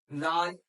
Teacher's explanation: जबान की नोक ऊपर वाले दांतों के किनारे से लगे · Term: दाल का मखरज